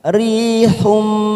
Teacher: dhamma tanwin bertemu dengan huruf ba, namanya bacaan iqlab. Kita tekan selama 3 ketuk, siap masuk pada huruf ba.